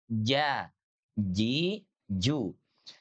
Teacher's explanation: Maksudnya kan huruf jim itu kan di langit-langit ya kan. Tengah lidah kita diangkat ke langit-langit.